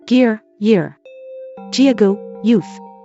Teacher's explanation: Germanic /g/ was palatalized to the semivowel /j/ before or between front vowels